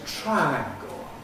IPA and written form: ˈtraæŋgl̩ (triangle)